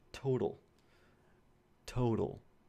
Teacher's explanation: The last sound is going to be a velarized L as well. It's occurring at the end of the word.